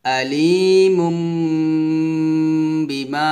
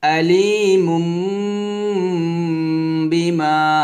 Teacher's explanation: তো যখন আমরা উচ্চারণ করব তাহলে এখানে আমরা কি করব, মিম দুই পেশ মুম বলবো, মুম, মুন বলা যাবে না, মুম বলতে হবে